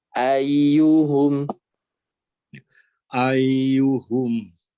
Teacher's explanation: tinggal satu lagi pada kata ayyuhum, ya-nya ditahan